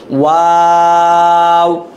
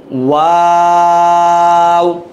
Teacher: ঠোঁটটা গোল করে শুরু হবে, গোল করে শেষ হবে